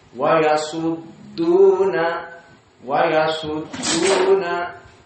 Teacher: Yang benar dal dia muraqqaqah, maka makhrajnya di depan dari lisan, maka dia termasuk istifal, bukan huruf isti'la. Maka dia kembali dari shad yang di atas, wa yasu, kembali kepada dal tasdid, wa yasudduna, wa yasudduna, seperti itu.